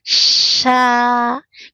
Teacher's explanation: S tidak boleh monyong ya karena syin bukan dari syafatain tapi dari tengah lidah. Fokus saja tengah lidah.